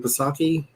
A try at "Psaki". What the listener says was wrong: Saki. I think the P is silent, if I remember correctly.